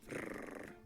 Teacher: Danish preserved a trilled Norse rrr